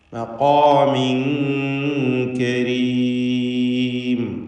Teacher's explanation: ഇഖ്ഫ ഹഖീഖി നൽകി മറച്ച് മണിക്കണം, ഉച്ചരിക്കണം, മണിച്ചുകൊണ്ട്.